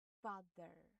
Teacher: And the sound is produced by the friction between the lip and your teeth.